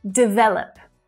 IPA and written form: dɪˈveləp (DEVELOP)